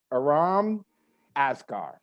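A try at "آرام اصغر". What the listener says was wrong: Oh, it's just the A is a little different. It's Asghar. It's Aram Asghar.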